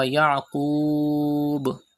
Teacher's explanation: Stretch Madde Aris up to 5 harakat.